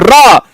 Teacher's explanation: उच्चारण करते समय जीवा में 2-3 बार कंपन होता है। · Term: लुंठित व्यंजन